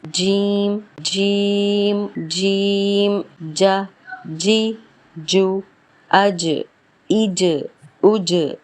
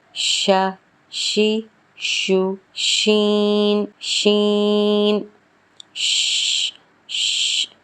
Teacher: جیم میں بالکل چپک جائے گی، شین میں تھوڑا سا گیپ آئے گا